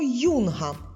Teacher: буква ю стоїть на початку слова дає нам два звуки й у